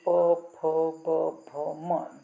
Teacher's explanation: दोनों ओठ आपस में टच होते हैं, स्पर्श करते हैं, इसीलिए प वर्ग को ओष्ठ्याः कहा जाता है।